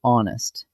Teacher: The H is silent, so the word actually begins with the vowel sound on. A vowel sound takes an, so the answer is an.